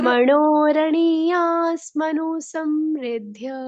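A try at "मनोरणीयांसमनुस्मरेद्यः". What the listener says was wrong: मनुनीस, मनु में स आधा हो जाएगा ना माता जी, समनु, समनुस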